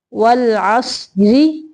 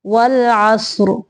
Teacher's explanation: ملانے کی صورت میں را باریک ہوگی اور رکنے کی صورت میں را موٹی ہوگی